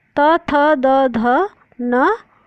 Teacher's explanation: त वर्ग दांत की सहायता से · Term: दंत्य